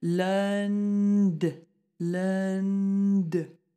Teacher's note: You've got an N and a D very close to each other, so we're going up into the nasal